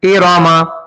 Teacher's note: ایراما میں را پتلا ہو گیا، لیکن موٹا پڑھنا ہے